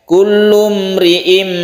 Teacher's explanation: In menjadi im menjadi m, n menjadi m. Kullum ri'im, dan kita tahan ya, kita panjangkan untuk iklab ini.